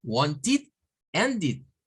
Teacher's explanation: en los verbos que terminan en T y en D, se agrega una sílaba más que se produce del sonido de una I. Recuerden que no es la I, es la I, es la corta, es la I que se corta acá, I, y el sonido de una D, id.